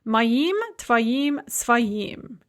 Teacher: So for the pronouns mój, mine, tvoj, yours, and svoj, one's own, the masculine and neuter ending is going to be a stressed im